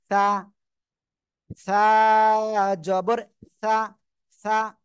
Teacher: জিহ্বার আগা, এই সামনের উপরের এই দুই দাঁতের আগায় লাগাবেন, লাগিয়ে হালকা বাতাস বের করবেন, বের করে উচ্চারণ করবেন।